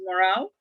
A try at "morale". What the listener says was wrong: it's morale, It's not moral. Moral is different from morale. Well, I never hear the stress.